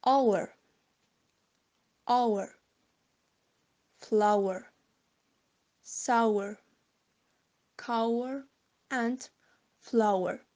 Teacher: The second vowel is u. The nearest cardinal is like u, but it can be seen that u is more open and near to central. The lips are rounded. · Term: triphthong